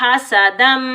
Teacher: इस हा को हलक के दरमियान से अदा करेंगे। सीन पर हम सीटी की आवाज़ निकालेंगे।